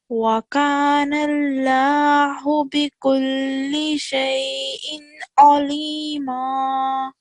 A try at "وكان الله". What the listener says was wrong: So just over here, we want the lam to be thicker. وَكَانَ اللَّهُ.